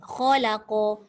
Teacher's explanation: Kha tebal, lam nipis, qaf tebal.